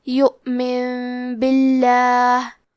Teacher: تو ہم نون ساکن کو ہلکی میم میں بدل کے اور غنہ کے ساتھ یہ حکم کو ادا کریں گے